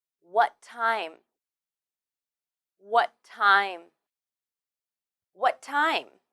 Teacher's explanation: Here, what ends with the t sound, and time begins with the t sound too. When you say them together, you only need to say one t sound